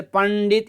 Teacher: इनके उच्चारण में नाक में आवाज जाती है साउंड जाता है